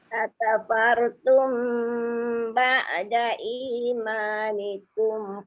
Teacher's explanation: mim bertemu ba tu dengung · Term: syafawi